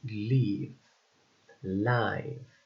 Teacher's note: L, which is a voiced, alveolar, lateral, and liquid sounds